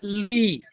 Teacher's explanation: जब हम ल उच्चारण करते हैं तो हमारी जीवा दंत के मूल भाग का स्पर्श करती है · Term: दंत्य